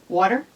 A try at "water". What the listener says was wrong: There's a slight or extra R in there. You don't say water. Well, you don't say water like some people.